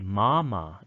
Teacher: you would say mama it's like a rounded a